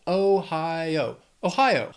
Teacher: Then Ohio, 3 syllables, stress is on that second syllable